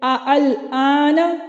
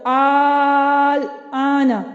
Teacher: الآن، یہ ہے تسہیل، اور الآن اس میں ہم نے اس کو الف مدہ سے بدل دیا یعنی ابدال کیا، تو یہ ہے ابدال، یعنی اب ہماری یہاں پہ تسہیل جوازی کا قاعدہ اپلائی ہو رہا ہے کہ ہم نے دوسری وجہ کو جائز قرار دیا۔